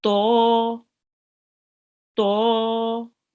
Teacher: The sound comes from the tongue, a little back from the tip. It touches the junction between the front upper teeth and the gum.